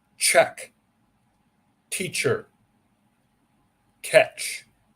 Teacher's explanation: CH is short sound strong puff of air check teacher catch and it can be spelled with a t